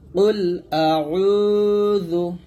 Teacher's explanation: এখানে উতে টান দিবেন এক আলিফ টান হবে